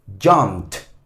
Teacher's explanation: Pero básicamente es cuando la última consonante tiene un sonido no sonoro, o sea que sus cuerdas vocales no suena, usted va a pronunciar esta terminación ed como una T